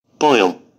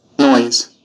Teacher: দুটি vowel sound একত্রে উচ্চারিত হয়। প্রথম স্বরধ্বনিটি একটু জোরে এবং দ্বিতীয় স্বরধ্বনিটি একটু নিম্নস্বরে উচ্চারিত হয়। নিচের শব্দগুলোতে অয় দ্বিস্বরটি রয়েছে।